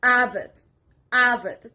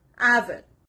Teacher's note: The stress is on the first part